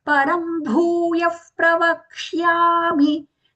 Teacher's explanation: So wherever the visarga is followed by the letter pa or pa, we are going to use that sound fa, which we call as upadmaniya.